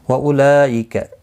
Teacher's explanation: یہاں پر مد متصل ہے، 4 الف کی مقدار کے برابر کھینچ کر پڑھیں گے